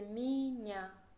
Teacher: aunque la primera vocal es ye, ya que no lleva el acento, la voy a pronunciar con boca cerrada y voy a decir miña.